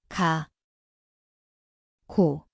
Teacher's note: 기억, See kõlab nagu kika, koht on keele tagaosa